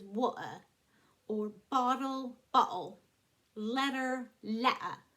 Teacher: T's, they do something that's called glottalization. They just cut off the T.